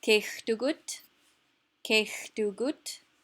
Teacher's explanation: Notice that kech is much more stressed than gut.